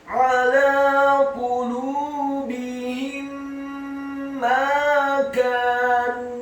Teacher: Idgham mimi artinya mendengungkan atau menggunakan dua huruf mim.